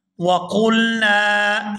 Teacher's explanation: یہاں نون کو الف مدہ کی وجہ سے کھینچ کر ادا کریں گے۔ الف خالی ہو اور اس سے پہلے زبر ہو تو اس کے ساتھ جو بھی حرف ملے تو وہ کھینچ کر ادا کیا جاتا ہے۔